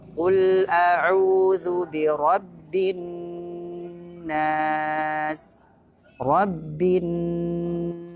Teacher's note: Nun tasydid di akhir ayat tidak langsung dibaca harokat Nun nya tapi ditahan sejenak